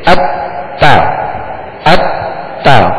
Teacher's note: جب بھی مشدد حرف پڑھیں کہیں پر بھی تو اسے دوہرا پڑھیں گے، یعنی دو حرف کی دیر. پہلے وہ اپنے ما قبل متحرک حرف سے ملے گا اور پھر ملنے کے بعد پھر وہ اپنی حرکت اس کی پڑھی جائے گی.